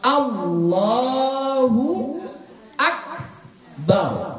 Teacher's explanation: Anya enggak panjang yang panjang adalah lamnya